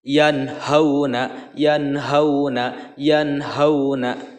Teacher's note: bertemunya nun sukun dengan hak ini dibacanya harus Idhar atau jelas